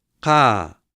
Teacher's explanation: This is an open pretonic. An open pretonic is generally long.